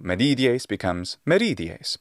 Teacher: we have an intervocalic d becoming an r sound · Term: rhodocism